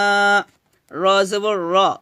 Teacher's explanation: রটা মোটা হবে এখানে, কারণ রর উপর কি আসছে, জবর আসছে, এজন্য আমাদের রটা মোটা করে পড়তে হবে।